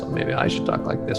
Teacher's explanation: that's called a vocal fry or i call squeaky hinge